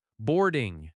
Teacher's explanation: Boarding has stress on board, boarding. The ing is softer.